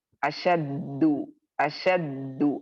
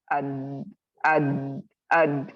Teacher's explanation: یہ sound is like it's so strong, the sound is so strong that out of that strength you feel the voice is stopping